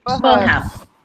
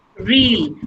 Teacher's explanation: र sound नहीं आएगी, ठीक है? देखो यहाँ पे कहीं पे भी र की sound नहीं है.